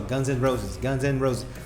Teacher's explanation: Você ouve o N, você não ouve o A, você não ouve o D. Isso é Connected Speech.